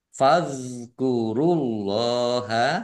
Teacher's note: dzal sukun ini bukan kolkolah jangan dipantulkan.